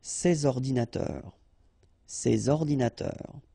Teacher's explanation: So you should make the liaison between S and O.